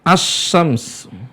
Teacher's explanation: huruf lam itu berdekatan dengan huruf setelahnya secara tempat keluar, maka lam akan tidak bisa dilihat. Tidak bisa terdengar suaranya. Makanya dibacanya dengan asy-syams. · Mana suara lamnya enggak muncul. Nah, makanya para ulama menyebutnya dengan lam syamsiyah.